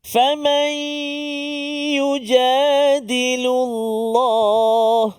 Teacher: Masukkan bunyi nun ke dalam ya berserta dengung 2 harakat, iaitulah nun mati bertemu dengan ya idgham ma'al gunnah.